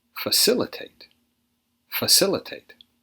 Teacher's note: stressed on the second syllable